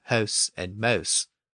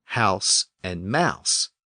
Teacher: And then the great vowel shift happened, and hoose and moose became hose and mose, and then became house and mouse. Now, some English dialects still retain that intermediate pronunciation as hose and mose, but Standard English shifted those pronunciations to the modern ow sound.